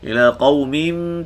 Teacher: tutup mulut secara ringan. Rapatkan bibir. Qaumin, panjangkan dengung. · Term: iqlab